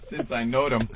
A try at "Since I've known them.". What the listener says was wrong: Since I've known them. It's an N at the end of that word, you dummy.